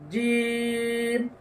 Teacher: শেষের দুই ঠোঁটের শুকনা অংশে লেগে যাবে কেননা শেষে মিম রয়েছে